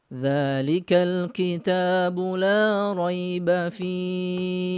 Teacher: huruf sukun yaitu hak ya dia menjadi sukun karena dia berhenti maka panjangnya yaitu empat harokat ya dibaca empat ketukan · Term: Mad Arid lissukun